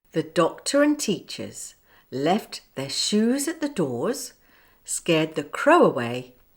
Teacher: a vowel in shoes at and with the linking Crow away the W changed from a Glide to the linking consonant sound wha in order to link the following vowel in the next